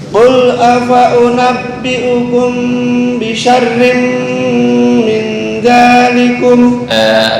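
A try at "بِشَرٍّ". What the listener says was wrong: Bisyarrin terlalu tebal. Bisyarrin. Qul afa'unabbi'ukum bisyarrin tipis.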